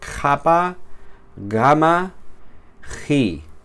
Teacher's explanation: Paramos el flujo de aire en la parte trasera de de nuestra boca con las consonantes gutorales, capa, gama, ji.